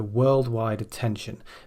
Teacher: worldwide actually has the stress on the first syllable as usual with a noun at the beginning rather than the